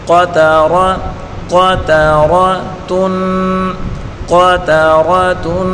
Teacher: قاف کو پر پڑھیں گے. تا کو باریک پڑھیں گے اور را کو پر پڑھیں گے اور اس تا کو بھی باریک پڑھیں گے.